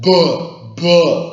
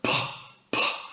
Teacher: a b sound is voiced whereas PP is voiceless